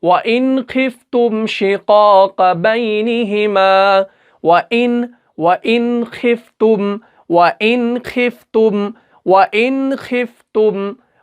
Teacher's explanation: نون کو ہمیں ظاہر کرنا ہے، بغیر گنہ کے ادا کرنا ہے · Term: اظہار